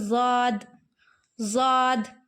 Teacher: ضاد زبان کی کروٹ اور اوپر کے داڑوں کی جڑ سے ادا ہوتا ہے، زبان کو مطلب کروٹ دے دو، کروٹ دے دیں گے زبان کو ہم، اگر پلٹ دیں گے اور سائڈ کی داڑوں میں لگائیں گے، چاہے آپ بائیں سائڈ لگائیں چاہے دائیں سائڈ لگائیں، دو ہی سائڈ ہم لگا سکتے ہیں۔